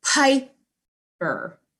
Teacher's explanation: the second p in the middle of piper is not a pa it's a small p so piper hard p middle p is a soft p okay